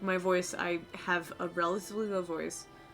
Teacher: I have a relatively low voice that I allow for a pretty natural amount of vocal fry or the pressure of my vocal cords to sort of like allow extra vibration when I speak